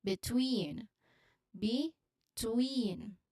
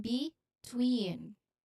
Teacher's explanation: Then it is followed by stress on tween. So the stress is on the second syllable, between, which has a long E sound as in C.